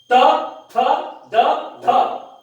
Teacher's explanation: इनके उच्चारण में जीभ जो है वो दांत से स्पर्श करती है। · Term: दंत व्यंजन